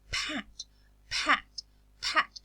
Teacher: When I produce the plosives, I aspirate them because they occur initially in stressed syllables. This aspiration is a puff of air between the release of the plosive and the voicing of the next sound. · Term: aspirated allophone